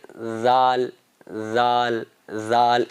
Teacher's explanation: زال کا مخرج یہ ہے کہ زال آپ زبان باہر نکالیں، زبان کا نوک جو ہے اس کو باہر نکالیں، اوپر والے دانتوں کے کنارے لگائیں